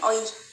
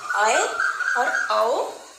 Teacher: उड़िया में इसको बोलते हैं औई और इसको बोलते हैं औ, लेकिन हिंदी में इसे आए और औ बोला जाएगा।